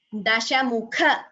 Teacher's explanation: Shitashara krita lavana dashamukha, kha is Mahaprana.